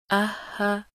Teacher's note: हा की अदायगी हलक के नीचे वाले हिस्से से